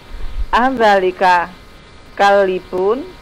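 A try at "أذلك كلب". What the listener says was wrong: Kalbun. Iya, lamnya disukun.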